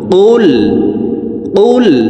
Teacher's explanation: কফ হরফের উচ্চারণ জিহ্বার গোড়া তার বরাবর উপরের তালুর সঙ্গে লাগিয়ে উচ্চারণ করে পড়তে হবে। তো এই পেশওয়ালা কফটি জজমুল লামকে একবার ধরবে, জিহ্বার গোড়া থেকে উচ্চারণ করব।